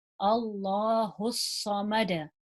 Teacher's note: The sad is heavy, so try and emphasize it.